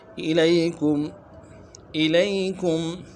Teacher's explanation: الی میں حمزہ کو واضح کریں گے، یا لین ہے نہیں کھینچیں گے۔ کم میں میم ساکن ہے غنہ کریں گے۔